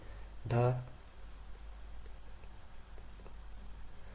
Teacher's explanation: धा तो ये चौथा वर्ण है, सघोष की पूरा करता है महाप्राण भी। हाँ महाप्राण क्योंकि चौथा वर्ण।